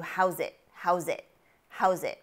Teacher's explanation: how is it gets turned into how's it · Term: linking phenomenon